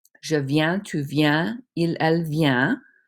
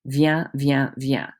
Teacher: Because there's no vowel after those consonants on the singular side, you do not pronounce them. They all sound exactly the same.